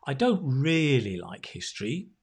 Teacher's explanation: you can say i don't really like history and emphasize the really